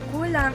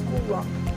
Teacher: The L sound sometimes, if it is used in the second or following syllable, becomes W. Kulang in Cebuano becomes Kuwang.